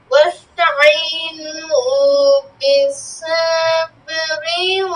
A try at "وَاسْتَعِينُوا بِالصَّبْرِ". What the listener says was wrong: সাবেরি হবে না বিসসাবরি واستعينوا بالصبر والصلاة